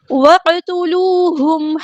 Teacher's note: واو کو ہم نے قاف کے ساتھ ملا دینا ہے، حمزۃ الوصل ہمارا ڈراپ ہو جائے گا، قاف ہمارا ہیوی لیٹر ہے، پورا ادا کریں گے۔